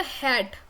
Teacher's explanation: The sound of H is a fricative ग्लॉटल sound. ग्लॉटल हमने बात की थी, जो साउंड ग्लॉटिस से क्रिएट हो रही है.